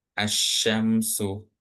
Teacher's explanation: menandakan bahwa alif dan lamnya nggak dibaca tapi langsung ke shin, ke huruf shinnya, ke huruf yang bertasydidnya itu.